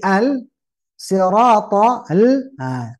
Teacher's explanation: menyebut lam mati kan Al tipis jangan sampai dipengaruhi oleh huruf th ya th